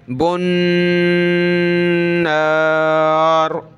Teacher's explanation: با کو نون کے ساتھ ملائیں گے، بن نار، یہاں غنہ ہوگا نون پر